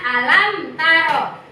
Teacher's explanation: Mim mati bertemu dengan huruf ta di sini izhar safawi. Jelas mimnya ya.